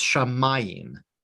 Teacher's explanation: the accent is on the meme